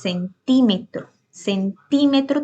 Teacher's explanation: tiene el acento en ti que es la ante penúltima sílaba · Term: esdrújulas